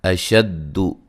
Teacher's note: اشد حمزہ کو واضح پڑھیں گے، شین کو دال سے سختی سے ملائیں گے، لمبا نہیں کریں گے، دال کو زبر زیر پیش والے حرف کو لمبا نہیں کرنا۔